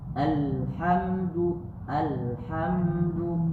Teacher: mim sukun bertemu dengan da dia itu namanya izhar syafawi jadi tidak ada tidak ada dengung